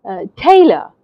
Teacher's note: you hear the teh part of the word louder than the a part of the word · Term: stress